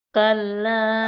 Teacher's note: কাল্লা তিন আলিফ টেনে পড়বো